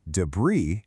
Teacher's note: That S at the end, it's completely silent.